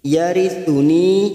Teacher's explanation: ni ada kasrah bertemu ya sukun 2 harakat